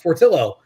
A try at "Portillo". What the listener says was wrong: Not Fortillo. You said Fortillo with an F.